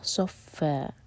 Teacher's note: فتح کی تنوین پر جب ہم رکتے ہیں تو یہ ہوتا ہے مد عوض عن التنوین، تو یہ بن جاتا ہے فا دو حرکہ لمبا